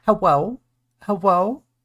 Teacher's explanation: Why am I saying hello in a rising tone as if I'm questioning you?